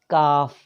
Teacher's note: کاف، جو کاف ڈڈی والا ہوتا ہے نا، کاف، یہ زبان کی جڑ تالو کا جو سخت حصہ ہے وہاں سے ادا ہوتا ہے کاف